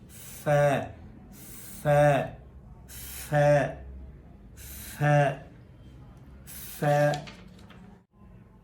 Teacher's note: اگلا حرف ہے فا فا یعنی اوپر کے دانت، اس کا کنارہ اور نیچے والا ہونٹ، اس کے اندرونی حصے پر دانت ٹکرائیں، پھر جو آواز نکلے گی وہ فا کی ہوگی.